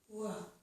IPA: w